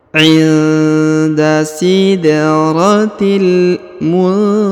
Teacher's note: Huruf nun sukun bertemu dengan ta, maka didengungkan dan disamarkan. Kemudian huruf ha dibaca 2 harokat karena di atasnya terdapat huruf alif kecil dan alif bengkok atau alif maksurah di depannya.